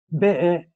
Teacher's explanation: Y como ustedes me escucharon, BE, hay un glotal en medio · Hay un corte en medio para pronunciar la última U, que la última U es nasal.